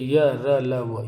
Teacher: अंतस्थ व्यंजन जो होते हैं वे ध्वनियां जिनका उच्चारण करते समय मुखांक आंशिक स्पर्श करते हैं। आंशिक यानी बिल्कुल स्पर्श कम हो रहा हो उनको अंतस्थ व्यंजन कहते हैं।